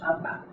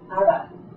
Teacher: This B is not a stop like we would say it in English, aba. It's actually a continuant